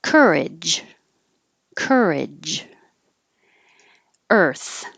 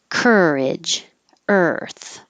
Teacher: the er sound is really just the noise of the r so curl your tongue back so that it's not too far